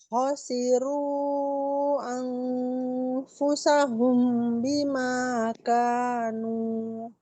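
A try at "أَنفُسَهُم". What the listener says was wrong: Di sini dipanjangkan temponya tuh sekitar 3 harokat. Anfusahum gitu.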